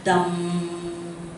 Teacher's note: M refer to the, actually we call nasal sound. So when you recite, you should recite Buddham with the vibration here, okay? We call it nasal sound.